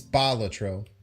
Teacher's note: The first syllable is what's pushed.